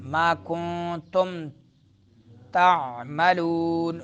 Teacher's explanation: لون میں کیا ہوگا؟ مدہ، نون غنہ نہیں · نون ساکن، اس سے ما بعد حرف تا آ رہا ہے، تو نون کو چھپائیں گے یعنی اخفا کریں گے